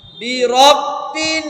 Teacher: এখানে বলছে নাকের ভিতরে বাজান, নাকের ভিতর গুন গুন করে আওয়াজ করা, গুন্না।